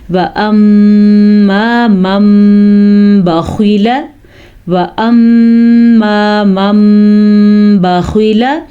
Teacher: جب نون ساکن یا دو زبر دو زیر دو پیش والے حرف کے بعد با آ جائے تو وہ نون ساکن یا دو زبر دو زیر دو پیش میم میں بدل جاتے ہیں. چھوٹا سا میم ہمیں نظر آ رہا ہے. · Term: غنہ اقلاب